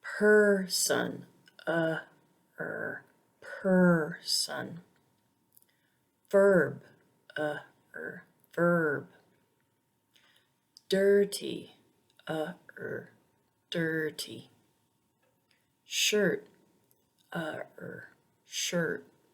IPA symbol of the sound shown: ɜː